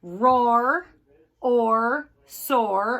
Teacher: Okay, so these kind of break the OA rule because they don't say O as clearly as you can hear it, but the R kind of changes the sound